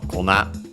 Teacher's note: More often you'll find it in its extended form, kona, accent on the last syllable